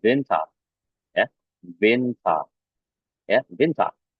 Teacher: Kalau ada huruf ER pada bagian belakang ini, biasanya mereka menghapusnya ya dan mengganti bunyinya itu menjadi A